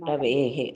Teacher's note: రవే తర్వాత విసర్గ ఉంటుందండి ఆ విసర్గను మనం ఎలా చదువుతామ అంటే రవేహే అని చదువుతాం